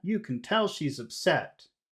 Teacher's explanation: we have a very perfect long short long short long short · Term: perfect Rhythm